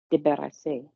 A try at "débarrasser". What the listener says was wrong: You can go smaller with the plosive B. Débarrasser. We don't want débarrasser. Go smaller. Débarrasser.